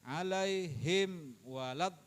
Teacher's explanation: idhar syafawi, jangan didengungin, jangan dipanjangin, jangan dilamain